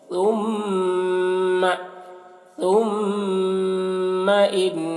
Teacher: ثم ثا کو باریک پڑھیں گے، میم میں غنہ کریں گے